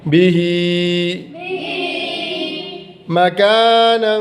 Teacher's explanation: ہا کے نیچے کھڑی زیر ہے تو یہ یا مدہ کے برابر لمبی ہوتی ہے